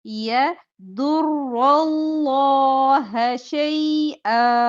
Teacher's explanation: ضاد मोटा रॉ के ऊपर जबर है तो रॉ मोटा लफ्ज अल्लाह से पहले जबर है तो लाम मोटा तीनों हरूफ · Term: तीनों हरूफ मोटे